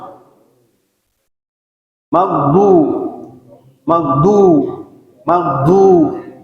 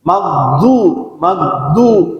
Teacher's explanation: itu aja patokannya jangan sampai keluar dari Gigi maksudnya mancal gitu bibirnya manyun ya bibirnya dimyongin itu wajib karena kita mengarah ke harkat domah